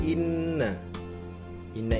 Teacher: ke-14 Inna Indah itu hukumnya guna sebab Nun bertanda tasydid dan cara membacanya dengan dengung serta ditahan dengan tiga harokat